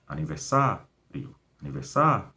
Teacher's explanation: Então, sa é o mais forte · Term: sílaba mais forte